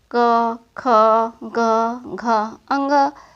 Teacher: क वर्ग का उच्चारण कंठ की सहायता से किया जा सकता है।